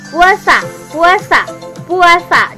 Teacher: kalau terletak di tengah huruf antara U dan E, itu akan memunculkan bunyi W · U dan A juga akan memunculkan semivokal W